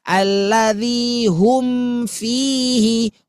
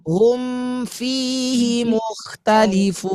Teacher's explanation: Hum, sempurnakan bunyi mim yang keluar dari idhar syafawi, baru pindah kepada huruf berikutnya.